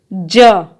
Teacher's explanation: ज जो है संघर्षी व्यंजन है